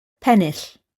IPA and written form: ˈpɛnɪɬ (Pennill)